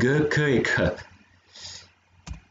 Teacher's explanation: Et donc là, il faut imaginer que le petit schéma, c'est la langue qui vient se coller au fond du palais, donc sur le vélum, sur la partie molle du palais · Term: vélaires